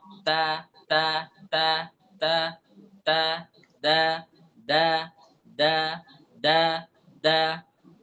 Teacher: Keluar dari ujung lidah, dengan tempat tumbuh gigi atas.